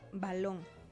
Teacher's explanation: La B suena b, es oclusiva, bilabial, sonora